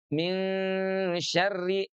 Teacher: tapi sengau keluar dari hidung min syarri ditahan dua ketuk · Maqil gunti disertai dengan ghunah. ghunah itu ditahan suaranya dua harakat kemudian keluar dari hidung